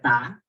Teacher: Ta itu ada hamas sedikit. Ya. Hamasnya agak ringan. Tidak sekedar ta.